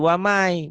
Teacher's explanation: Waman, jadi wamai. Bunyi N-nya hilang. Melebur ke Y. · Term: idgom